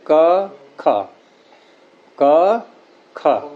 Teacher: तो ख में वायु को हमने अधिक वेग से निकाला है। और यूं भी देखो कि क ख, क ख, तो क में हमने जब चिपकाया गले के क्षेत्र को बंद किया तो जोर लगाया था या हल्केपन से किया, और ख में देखो, इन दोनों में अंतर देखो क्या है।